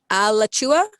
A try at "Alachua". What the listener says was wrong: Again, I'm gonna give you that because of the A pronunciation. Otherwise, it was spot on. It's Alachua.